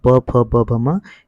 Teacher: प फ ब भ म ये ओष से बोले जाते हैं